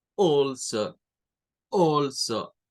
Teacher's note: Porque está a la par de la L. La A con la L se hace un sonido que se le conoce como glottal stop. Es como una O cortada.